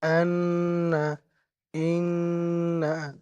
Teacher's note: এক আলিফ পরিমাণ গুণনা করবেন যেমন আন্না ইন্না